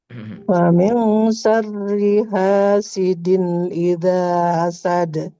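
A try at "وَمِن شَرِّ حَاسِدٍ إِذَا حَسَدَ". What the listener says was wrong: Ha pakai ha kerongkongan. Diulangi.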